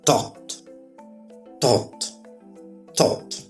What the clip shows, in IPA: tɔːt